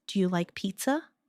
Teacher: Make sure your voice rises at the end. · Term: intonation